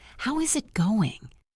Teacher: The intonation usually goes down at the end.